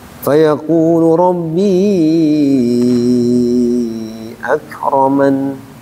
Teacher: An-nya ditahan. Jangan jangan dipantulkan.